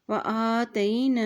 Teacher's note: درجات، جیم کے اوپر کھڑی زبر ہے تو اس کو ایک حرکت لمبا بھی ادا کریں، درجات، ٹھیک ہے۔ وآتینا، حمزہ کے اوپر کھڑی زبر ہے، اس کو ایک حرکت لمبا ادا کریں